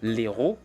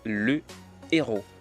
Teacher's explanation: puisqu'il s'agit d'un h aspiré on ne peut pas faire la liaison ni l'élision donc on ne peut pas dire l'Hérault mais c'est le héros